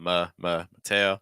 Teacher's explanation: First syllable very weak for schwa sound.